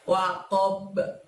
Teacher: Di situ terjadi bacaan qalqalah juga teman-teman, karena kita membaca sukun huruf ba di sana ya.